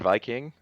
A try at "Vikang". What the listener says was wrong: I love how y'all are pronouncing it Viking when it's Vikang.